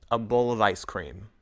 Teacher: we link the word of to the words around it we don't stop between the words